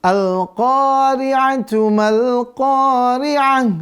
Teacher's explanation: Al-Qari'ah ya, itu dia menjadi ha ketika dia berhenti. Jika pemirsa pengen lanjut di ayat selanjutnya, maka Al-Qari'ah menjadi Al-Qari'atu mal-Qari'ah.